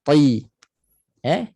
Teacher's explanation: bila ta tebal, dia naik pangkal dan tengah lidah. Isti'ala itbaq, dia naik Jadi dalamnya mangkuk macam ni.